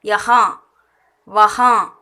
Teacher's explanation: யஹா அதோட நிறுத்திடணும். யஹா வஹா அந்த மூக்கால் ப்ரொனவுன்ஸ் பண்ணுற மாதிரி வரணும். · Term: அனுநாசிக்